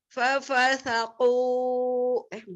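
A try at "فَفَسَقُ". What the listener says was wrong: Kepanjangan.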